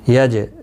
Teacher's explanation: جیم ساکن پر قلقلہ ہوگا